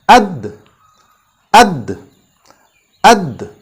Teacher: Or where do you feel the last impact of the syllable? It stops at our tongue touching the root of our front teeth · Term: makhraj of dal